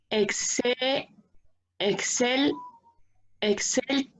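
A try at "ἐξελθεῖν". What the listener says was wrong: Perfecto.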